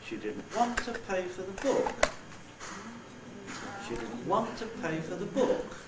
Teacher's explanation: I've made pay accented as well by making uh the pitch Contour step down there so I've got three accented syllables want the onset book the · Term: accent in the head